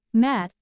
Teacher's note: M. The lips close together to produce a nasal consonant with the airflow coming through the nose. In words like mat, the lips come together, and when they are opened, the sound M.